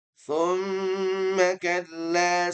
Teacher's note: lamun ta bukan ta ya tapi ta nah kalla saufaamu unib sudah ya ayat keempat tumma kalla saufaamun hanya pengulangan pengulangan yang ayat ketiga bedanya ada kalimat tsumma ya dikata tsumma tapi tidak boleh buru-buru ya harus ada dengungan Karena mim yang bertasydid dia temponya dipanjangkan. Tempo ghunahnya dengungnya kita panjangkan.